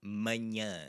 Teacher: it's the sound in manhã. It's this nasally A sound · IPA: [ɐ̃]